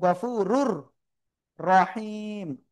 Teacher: ইদগামে বেলা গুণ অক্ষর র, গুন্না ছাড়া মিলিয়ে পড়বো